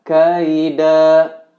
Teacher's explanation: Secara penulisan kaidan. Nah, karena terdapat di akhir kata atau pada waqaf, maka dibaca kaida, dan itu pun hanya 2 harokat.